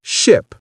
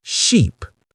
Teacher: The difference is both length and mouth position. For the short i in ship, your mouth is relaxed. For the long e in sheep, your lips spread wide like you're smiling.